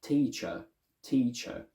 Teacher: some other accents more modern ones as well tend to open the schwa a little bit more into almost an a sound